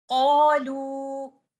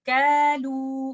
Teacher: اس کو پڑھتے وقت ہمیں یاد رکھنا ہے کہ قوف کو ہم کیف نہ پڑھ دیں اور ہم اس کو ایسے نہ پڑھ دیں کالو، کیونکہ قوف ایک ہیوی لیٹر ہے، آپ نے اس میں استعلا بھی کرنا ہے اور یہ تفخیم کا ہائیسٹ لیول ہے۔ تو آپ اس کو پڑھتے ہوئے یہ ساری باتیں یاد رکھیں گے۔ · قوف کیونکہ ہیوی لیٹر ہے، استعلا کا لیٹر ہے، تو الف مد بھی ہیوی ہی ہوگی